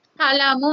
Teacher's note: ఫలము అంటే 2 పెదాలు మూసుకుని ఫలము అన్నప్పుడు పాల హకారం చేరుతుంది.